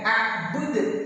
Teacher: Ini adalah qalqalah kubra, qalqalah yang ada di pemberhentian kalimat atau waqaf.